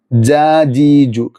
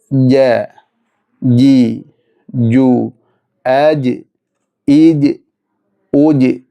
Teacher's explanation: നാവിന്റെ മധ്യവും നേരെ മേലിടുന്നതായ അണ്ണാക്കുമാണ്